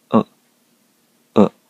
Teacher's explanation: 口を狭く開いて曖昧な音、う、う、と言います